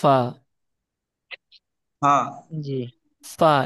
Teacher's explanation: ফার উচ্চারণ উপরের দাঁত নিচের ঠোটে লাগাতে হবে দুই ঠোট মিলবে না